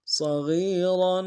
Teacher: صاد کو موٹا ادا کریں گے، غین کو موٹا ادا کرتے ہوئے یا کے ساتھ ملانا ہے، یہی مدہ ہے، ایک مقدار میں کھینچیں گے، اور را کے اوپر تنوین ہے، غنہ کریں گے۔